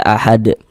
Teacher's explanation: Ee kenapa kok huruf huruf dal disukunkan kok dimatikan? Ini kalau kita berwakaf berhenti di huruf dal, huruf dalnya kita sukunkan, kita matikan. Sehingga kita baca ahad.